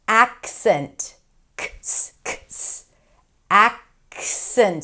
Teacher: So that k is kind of held and then you shift into the S.